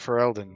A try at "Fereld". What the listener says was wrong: Name's not Ferelden. Just Fereld. Like Gerald with an S.